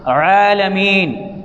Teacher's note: عین سے عالمین زور لگا کر، حلق کے زور سے